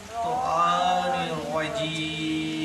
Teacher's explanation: ত একেবারে মোটা আওয়াজে একটু লম্বা টান দিতে হবে। ত মানে একালিপ টান।